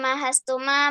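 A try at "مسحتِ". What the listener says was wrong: Ma, diulang Masahti. Bukan Mahasti. Kalau Mahasti haknya dulu baru sinnya. Ini sinnya dulu. Masahti.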